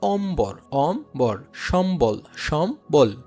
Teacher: ম এর সাথে যদি বফলা সংযুক্ত থাকে তবে ব ফলার উচ্চারণ অবিকৃত থাকে।